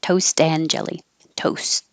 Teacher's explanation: i'm going to put a little mark there to show that i'm going to hold that t unless there was a word with a vowel after it